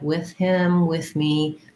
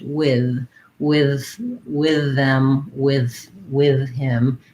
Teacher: with can be pronounced with the voiceless th like with him with me that's how i typically say it but many people also say it with the voiced th with with with them with with him it's harder for me